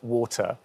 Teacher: unlike your accents, I don't have the R at the end of that vowel. So, yeah, so I just come off of it, water.